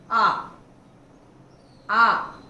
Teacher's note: विवृत, पूरा खुला हुआ, आ एक ही स्वर है जो विवृत है